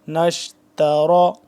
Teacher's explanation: تا باریک اور را موٹا کر کے پڑھیں گے